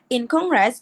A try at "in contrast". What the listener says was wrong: Ini banyaknya in contrast ya, bukan in contress.